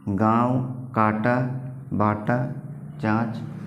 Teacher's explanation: नाक से कम तथा मुख से ज्यादा वायु निकलती है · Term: चंद्रबिंदु